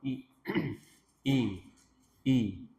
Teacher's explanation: Ilah, i, tadi makhrajnya pangkal tenggorokan i.